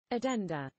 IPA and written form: əˈdɛndə (addenda)